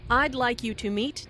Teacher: listen for the D in I'd like this means I would like which is very different from I like